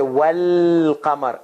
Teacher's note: then you have to connect waw with lam, and you say wal qamar, and alif goes away.